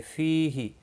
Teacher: فی یا مدہ ہے، 1 الف کے برابر کھینچ کر پڑھیں گے۔